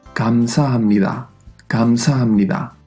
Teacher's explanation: Su pronunciación dependerá de varios factores, pero por lo general se pronunciará como un intermedio entre la G de gato y la K de kilo. · A veces se romanizará con una G o con una K, porque en realidad no es ni un sonido ni el otro. Sí que suena más como una K que como una G, pero aún así el sonido es intermedio.